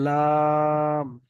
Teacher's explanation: তিন আলিফ টান দিয়ে বলতে হবে, লাম।